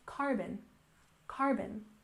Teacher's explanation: And next we have carbon emissions. Remember, carbon has the stress on the first syllable